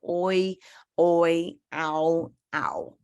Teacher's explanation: Phoneme, where the mouth glides from a vowel sound directly into the same syllable. Both vowels can be heard, but not quite making the usual sound because of the blending. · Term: diphthong